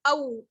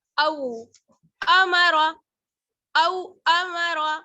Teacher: او، حمزہ واو زبر او، یہاں پر واو لین ہے، واو ساکن ہے، اس سے پہلے زبر کی حرکت ہے تو اسے کھینچنا نہیں ہے، نرم پڑھنا ہے، یعنی معروف پڑھنا ہے، مجہول نہیں پڑھنا ہے، او نہیں پڑھنا ہے بلکہ او.